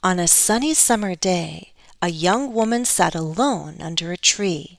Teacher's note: i'm stressing content words giving more stress to the final one